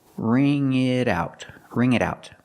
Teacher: The t and it changes to a fast d because it's between vowels.